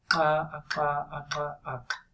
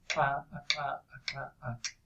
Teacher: It may sound similar to a cluster of K and L, but it's not really a lateral. This is the alveolar lateral click. This is like the sound of calling a dog.